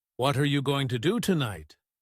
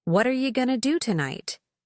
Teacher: In reality, natives say something that sounds more like, "What are you gonna do tonight?" Notice how you becomes ya and going to becomes gonna. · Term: connected speech